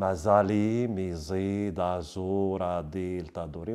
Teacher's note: Le timbre change à cause de ces phonèmes qui sont emphatiques. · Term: emphase